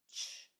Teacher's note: So all you hear is ch is a silent sound. So there's no vocal cords being used, no vibration in your voice box, only air, just ch, just a breath coming out. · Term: the CH sound